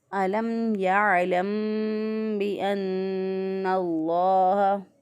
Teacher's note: بعض لوگ اس کو پڑھتے ہیں علم یا علم، علم، جب ہم ہونٹوں کو بند کر دیں گے تو اس کا مطلب ہم یہاں پہ گنہ کر رہے ہیں، تو گنہ یہاں پہ نہیں ہوگا، ہم اس کو میم ساکن کی آواز کو واضح کر کے پڑھیں گے